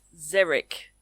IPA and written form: ˈzɪəɹɪk (X-E-R-I-C)